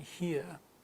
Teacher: in British the here of course would have no R sound in it